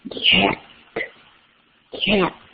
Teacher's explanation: the back of the tongue seems to be lifted to the top of your mouth